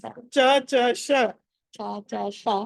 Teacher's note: ష అన్నది మనం చ ఎక్కడి నుంచి పలుకుతామో ష కూడా అక్కడి నుంచే పలుకుతాం